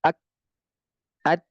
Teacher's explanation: Ada sifat dia hamas, makanya dia keluar lagi, lepas lagi.